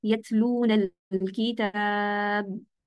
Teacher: आपने होंठ बंद किया है, आवाज बंद हो गई। इस आवाज को सुनने के लिए हम एक एक्स्ट्रा सिफत अदा करते हैं, जिसको कलकला कहा जाता है। कलकला एक ऐसी सिफत है जो बताती है कि हम क्या करते हैं, और फिर जैसे हमारा मखरज खुल जाता है, यानी हमारे होंठ खुल जाएंगे यहाँ पर, तो इसके अंदर हमें इसकी आवाज सुनाई देगी और उसको कलकला कहा जाता है।